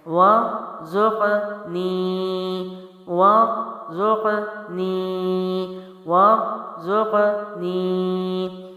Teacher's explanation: واو کے اوپر زبر ہے اور را ہم موٹا پڑھیں گے کیونکہ جزم والا ہے، ملا کے پڑھیں گے، زا جو ہے سیٹی اور سختی کے ساتھ ہے اور قوف جو ہے حروف قلقلہ سے ہے، موٹا بھی پڑھیں گے اور ہلا کے بھی، نی پھر آگے کیا ہے؟